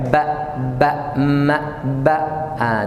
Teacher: Dua-duanya keluar dari bibir dan dua-duanya kasrah.